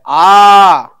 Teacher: நெடில் எழுத்தை ஒலிக்கும் கால அளவு இரண்டு மாத்திரை